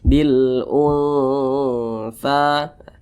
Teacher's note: Tha didengungkan, digunahkan, suaranya itu kita tahan, kita panjangkan sejenak. Bil tha. Kemudian tha dibaca panjang. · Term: ikhfa hakiki